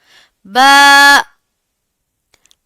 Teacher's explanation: दोनों हंठों को मिलाकर थोड़ी देर के लिए वाइब्रेशन होगी और फिर दोनों तर हिस्से जब एक दूसरे से जुदा होंगे तो ब अदा होगा। · با، با کا اخراج ہمارے دونوں ہونٹوں کے تر حصے ملنے سے ہوتا ہے۔ دونوں ہونٹوں کو ملا کر تھوڑی دیر کے لیے وائبریشن ہوگی، اور پھر دونوں تر حصے جب ایک دوسرے سے جدا ہوں گے تو با ادا ہوگا۔